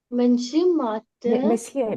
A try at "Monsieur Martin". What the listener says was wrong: Monsieur, we don't pronounce N. Monsieur Martin.